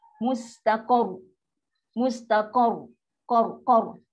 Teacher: Qa tinggi. Ra automatik dia pun jadi tafkhim. Mustaqor. dan dia ada sifat getaran tu, tu mustaqar, akan bunyi.